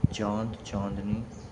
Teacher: अनुनासिक के उच्चारण में मुंह से अधिक नाक से बहुत कम सांस निकलती है।